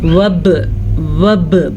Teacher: बा हरूफ़ क़लक़ला में से है तो हम इसके ऊपर झटके के साथ पढ़ेंगे, इसे क़लक़ला कहते हैं। वब वब वापस साकिन आ गया इसलिए झटका होगा।